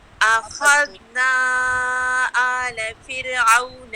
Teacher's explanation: آلَ دونوں کو نہیں اٹھانا، اور جو ذال ہے نا اخذنا کا ذال اس کو آپ نے ہلانا نہیں ہے. اخذنا آل فرعون.